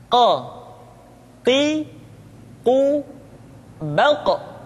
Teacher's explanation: huruf q diucapkan dengan cara menyentuhkan pangkal lidah kita dengan langit-langit bagian belakang qo Qi baq diucapkan dengan suara yang tebal dan dalam posisi